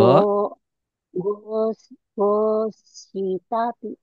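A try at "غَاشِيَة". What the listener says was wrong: Ini bukan Tati. Titiknya di bawah. Gosyati. Gosyati.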